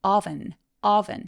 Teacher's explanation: 오븐은 oven oven 해서 턱이 길어지는 오예요